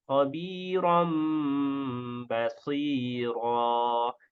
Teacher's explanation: Dibaca dengan tarqiq pada kedua huruf ra-nya.